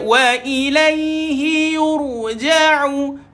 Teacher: Ditebalkan, dimuncungkan ra itu.